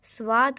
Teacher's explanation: स जो आधा है स्वाद, स की ध्वनि हमें थोड़ी सुनाई दे रही है, लेकिन वाद पर हम पूरा कंसंट्रेट कर रहे हैं।